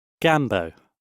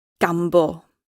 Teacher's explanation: British English has a diphthong, but the Welsh English version has a monophthong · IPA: /ˈɡamːboː/